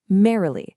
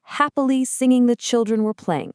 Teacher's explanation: It starts with a strong stress and trails off with two unstressed syllables. Dum-da-da. Think of the word merrily. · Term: dactyl